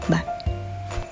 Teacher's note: ketika bibir merapat udara tidak mungkin keluar kemudian udara dilepaskan secara sekaligus dan udara tertiup keluar melalui bibir menghasilkan suara yang eksplosif